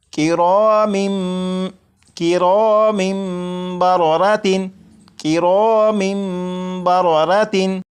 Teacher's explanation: जब तनवीन के बाद बा है तो यहाँ पर इकलाब होगा, यानी यहाँ पर तनवीन के अंदर जो नून साकिन की आवाज़ होती है उसे मीम से बदलकर गुन्ना करके पढ़ेंगे